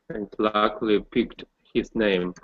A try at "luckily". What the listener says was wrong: So get that ul sound in there.